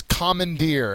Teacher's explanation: the third syllable is the accented syllable